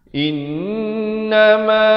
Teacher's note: Innama dibacakan dengan dengung dua harakat di sini wajibul gunnah